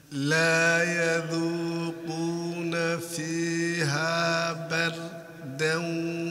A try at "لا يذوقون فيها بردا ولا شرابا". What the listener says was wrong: لا تسكت خلي الصوت يمشي leave the sound passing بردا بردا و ولا شرابا ولا شرابا شرابا ولا شرابا ولا شرابا